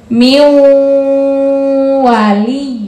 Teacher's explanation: ada nun mati bertemu dengan Waw dibacanya harus masuk dan dengan mendengung